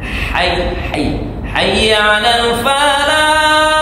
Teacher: hak yang tempat keluarnya di tengah tenggorokan · Ha yang di hayya 'alal falah itu ha yang tempat keluarnya di tengah tenggorokan. Jadi bacanya atau lafalnya hayya 'alal falah pakai ha. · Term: hak kecil, ha kecil